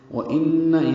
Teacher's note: نون مشدد پہ غنہ ہے